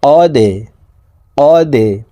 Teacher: দাল কলকলার হরফ নিচের দিকে ধাবিত করে ধাক্কা দিয়ে উচ্চারণ করতে হবে